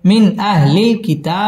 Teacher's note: ইজহার গুন্না ছাড়া স্পষ্ট করে পড়তে হবে